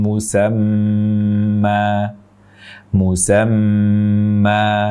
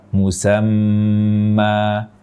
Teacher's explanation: Panjang 2 harokat, tidak menutup pita suara.